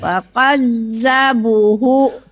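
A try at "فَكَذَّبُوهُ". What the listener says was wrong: Panjang. Fakadzabuhu hunya pendek. Hunya pendek.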